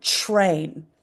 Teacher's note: So we've got T and R, and T is T and R is R. But when we push them together like that, sometimes we hear ch, R. It can sound like ch, R, train.